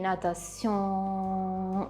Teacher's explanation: e poi la parte nasale quindi l'incontro di O + N dovrò pronunciarla nasalizzando la N cosa significa facendo passare l'aria dal naso quindi natation e mai pronunciando realmente la N nel video Che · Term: pronuncia nasale